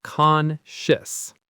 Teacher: the ending is a quick sh sound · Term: quick shis sound